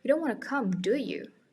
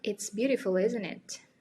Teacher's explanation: Intonasinya nggak naik, tapi malah turun.